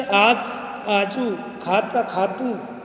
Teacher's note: पुल्लिंग एकवचन शब्दों के अंत में, जो पुल्लिंग एकवचन शब्द हैं उनके अंत में उ ध्वनि का उच्चारण होता है